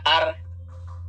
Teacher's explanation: نون ساکن پڑھا ہی نہیں جائے گا اس میں، یعنی نون کی آواز ہی نہیں آئے گی۔ لکھا جائے گا ان لیکن پڑھا جائے گا ار۔ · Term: ادغام